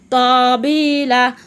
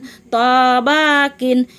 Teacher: ত জিহ্বার আগা থেকে মোটাভাবে আদায় হবে, নইলে তা অক্ষর আদায় হয়ে পড়া হারাম হয়ে যাবে।